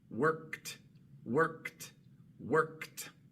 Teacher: Como la K es sorda, va a salir el sonido sordo de la T.